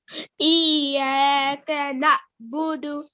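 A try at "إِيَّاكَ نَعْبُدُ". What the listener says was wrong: Try not to give an alif sound here. Na.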